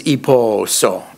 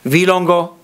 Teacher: the demonstratives require that the nouns become all high tone. So by itself, present is iposo, all low tone, but it becomes iposo, and the word for pots is vilongo.